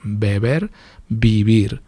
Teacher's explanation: La primera es bilabial, beber, y la segunda es lo que se llama aproximante. Mis labios se aproximan, pero no llegan a tocarse.